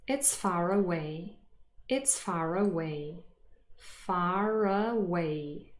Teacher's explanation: there's a r in between far and away, again to distinguish between the two vowel sounds